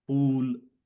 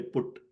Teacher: pool, the longer oos. Okay, compared to say put, short u.